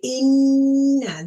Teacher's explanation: So I'm going to hold the sound in my nose for 2 counts. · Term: ghunna